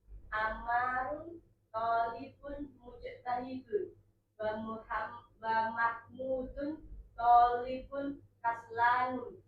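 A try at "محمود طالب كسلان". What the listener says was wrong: Kaslanu tanpa tanwin.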